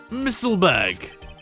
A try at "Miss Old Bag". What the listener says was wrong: The way you said Miss Old Bag, it sounded like you went Missile Bag.